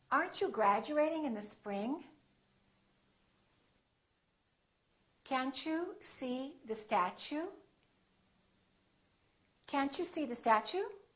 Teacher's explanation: When the T is followed by a U, it becomes chew.